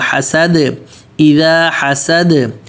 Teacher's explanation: صد سین پتلا اور دال بھی پتلا، لیکن دال پر قلقلہ ہوگا